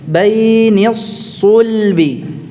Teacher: Kita mencucu bibirnya dhammu syafatain pada saat mengucapkan su saja. Shad dhammahnya su, nah baru mencucu.